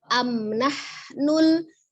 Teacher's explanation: Amnahnul, mim sukun bertemu dengan huruf nunnya, izhar safawi kembali, kemudian hak sukunnya ya kembali, dihamaskan, dialirkan nafasnya ketika mengucapkan huruf H dari tenggorokan bagian tengah